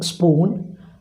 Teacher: the lower lip is the active articulator and the upper lip is the passive articulator sounds produced in such a way are called bilabial consonants bilabial